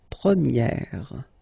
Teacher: So it's open, this eh sound.